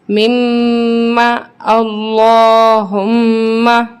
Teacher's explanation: میم مشدد ہے، اس کو ہم سختی کے ساتھ جماؤ کے ساتھ پڑھیں گے اور غنہ کریں گے